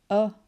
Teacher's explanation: you just have your mouth open and your tongue's sitting in the middle doing nothing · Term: schwa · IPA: ə